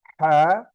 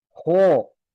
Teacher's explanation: है नीचे वाले हलक से अदा होगा, हो ऊपर के हलक से अदा होगा